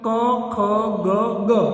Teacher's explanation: કંઠ દ્વારા આનું ઉચ્ચારણ થાય એટલે કંઠ સ્થાની કહેવાય